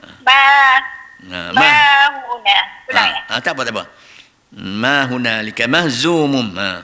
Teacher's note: Ni huruf za dia kerah. Dia bunyi safir.